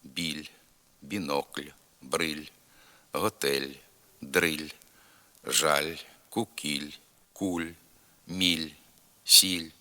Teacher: м'який л і тоді коли після нього стоїть м'який знак